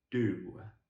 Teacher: And this time, the middle of our tongue comes further up than a ta. So we bring more of our tongue up, and we bring it down, and we vibrate our vocal chords in a da sound. So, I want it to be a bit lower, a bit deeper. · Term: D sound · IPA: /d/